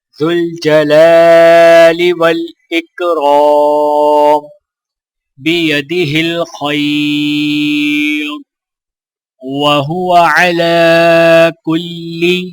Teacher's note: لام کے اوپر کھڑا زبر ہے تو لہٰذا ایک الف کے برابر کھینچ کر پڑھیں گے